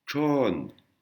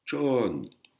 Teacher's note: c'est une accentuation aiguë qui monte